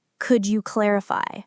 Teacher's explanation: If you say could you clarify with a falling intonation, it sounds more like a statement or even a demand.